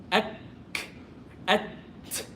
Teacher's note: with the kaf and ta, everything is blocked at first, then I release. Ak, at. That's why flow of air is important.